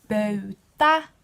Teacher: Bötä has the it has the U, and it has the A. It has all 3 of the front vowels, none of the back, because you can't put them together.